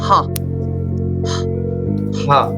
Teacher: I can't feel any vibration here, that is unvoiced sound.